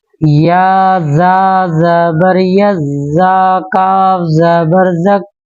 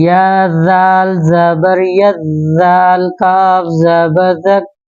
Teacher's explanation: زا کا تھوڑا ہم سختی کے ساتھ مخرج ادا کریں گے اور زال کا جو مخرج ہے وہ نرمی کے ساتھ ادا کریں گے، زبان کی نوک کو اوپر کے دانتوں کے ساتھ ملائیں گے تو زال کا مخرج ادا ہوگا۔